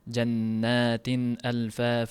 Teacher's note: Tanvin aniq bilinishi kerak, yashirilmaydi. Jannatin alfa faunarli jannatin alfa fa o'qilinmaydi. · Jannatin alfafa izhor qilinishi kerak. Tanvin aniq bilinishi kerak. Yashirilmaydi.